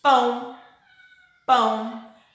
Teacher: É um som nasal. Sai do nosso nariz e da nossa boca ao mesmo tempo.